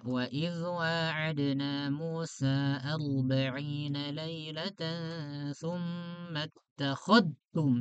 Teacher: kalau ada zal ketemu dengan ta, maka dia dibacakan diidghamkan yang idghamnya dia sempurna ketika dibaca